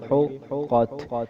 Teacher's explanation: قاف کے اوپر تشدید ہے اس لیے ہم اسے 2 بار پڑھیں گے